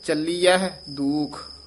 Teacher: ਚਲੀਅਹਿ ਚਲੀਅ ਨਹੀਂ ਕਹਿ ਦੇਣਾ ਹਹ ਵੀ ਉਚਾਰਨ ਕਰਨਾ